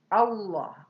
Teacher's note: Lam jalalah. Nah, ini tafhim harus ditebalkan lamnya.